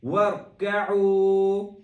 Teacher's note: را کو موٹا کریں گے اور ساکن کو واضح ساکن رکھیں گے